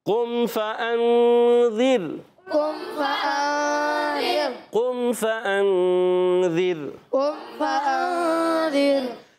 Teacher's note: इख्फ़ा की माना है छुपाना, यहाँ नून को छिपवा के एक अलिफ का गुन्ना करेंगे, नून को छुपाएंगे और एक अलिफ का गुन्ना भी करेंगे